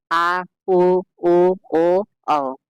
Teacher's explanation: जिन स्वरों के उच्चारण में जीभ का पश्च भाग काम करता है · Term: पश्च स्वर